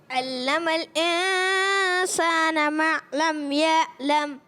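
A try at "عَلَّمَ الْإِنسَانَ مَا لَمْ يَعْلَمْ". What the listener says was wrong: اب انہوں نے دیکھیں باپو کیا کیا, اب غنہ تو صحیح پرفیکٹ کیا, ماہر ہو گئے, مگر علم الانسان میں عین کی ادائیگی, اب یہ جو ہے نا بڑی غلطی ہے, اس کو کہتے ہیں بڑی غلطی. ایک چھوٹی غلطی, ایک بڑی غلطی.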